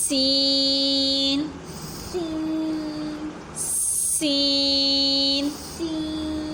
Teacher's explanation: دونوں دانتوں کو آپس میں ملانے سے ادا ہوتا ہے